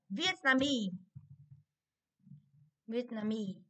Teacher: Thì trọng âm rơi vào mi.